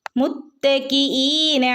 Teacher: മുത്തക്കിനാ ലാമിന്റെ ഉള്ളിൽ അലിഫ് ഉണ്ട് രണ്ടനക്കം നീട്ടി കൊടുക്കുക